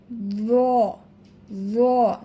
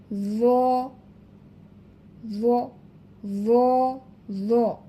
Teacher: জিহবার আগা সামনের উপরের 2 দাঁতের আগার সাথে লাগাইয়া জ উচ্চারণ করতে হবে